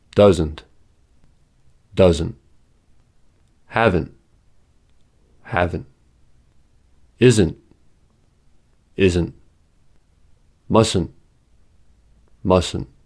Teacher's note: Note that the ta in negative contractions usually is not audible. We can tell the negative contraction by the n sound.